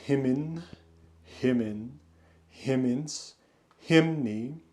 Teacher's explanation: any masculine noun that is two syllables, that has a root that ends in N, that masculine nominative singular ending R is going to assimilate to the N, so you get a second N, but that second N basically works like the R that otherwise marks the nominative singular.